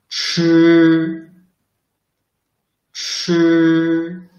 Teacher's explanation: Ch is similar to zh, except it is an aspirated sound. So you must produce this sound with more breath.